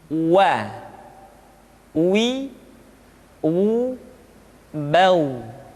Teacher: huruf wa diucapkan dengan cara memonyongkan dua bibir kita.